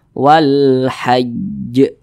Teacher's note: perhatikan di samping huruf ha termasuk salah satu huruf Qariah maka alif lam berjumpa dengan huruf ha hukumnya adalah alif lam qamariah sehingganya dibaca izhar huruf lamnya ini dibaca jelas